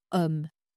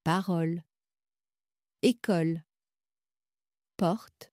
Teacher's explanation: Votre bouche est plus ouverte, le son est plus large. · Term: O ouvert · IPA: [ɔ]